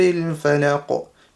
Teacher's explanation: Fa, lam, and qaf. Qaf's right at the end, so there'll be qalqala on the qaf.